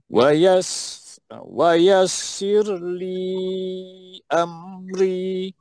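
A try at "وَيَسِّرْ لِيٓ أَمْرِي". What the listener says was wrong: Tekan pada am tu dan ri. Ri tekan pada pertengahan. Hamzah tekan ya.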